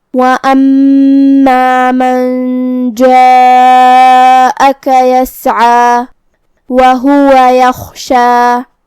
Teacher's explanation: مد واجب متصل کا معنی ہے کہ حرف المد اور اس کی وجہ جو کہ حمزہ ہے دونوں ایک ہی کلمہ میں ہو۔ مد واجب متصل میں ہم اپنی آواز 4 مد کے برابر لمبی کریں گے